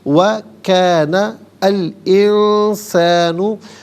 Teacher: وَكَانَ الْإِنسَانُ، نون پر زبر ہے، اسے الانسانوں کے لام ساکن کے ساتھ ملائیں گے، درمیان میں سے الف یعنی حمزہ کو حذف کریں گے۔